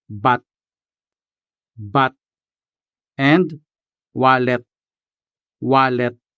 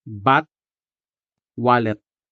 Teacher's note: in Hiligaynon words, the letter T at the end of the word is always clearly sounded.